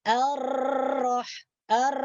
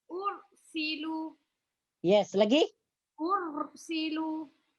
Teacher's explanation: ketika kita menyebutkan atau melekatkan huruf ro getaran itu disamarkan maksudnya getaran itu sedikit saja bukan banyak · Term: getaran yang samar